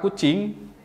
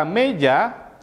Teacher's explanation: bunyi vokal U dalam kata kucing memiliki bibir yang bulat, sedangkan huruf E dalam kata meja memiliki bibir yang tidak bulat.